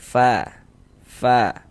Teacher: kalau mengucapkan huruf fa ada napas yang mengalir. Fa fa karena huruf fa salah satu huruf yang memiliki sifat hames.